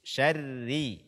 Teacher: Begitu juga dengan ro bertasydid, kemudian dia berbaris kasroh. Ini dibaca dengan tipis.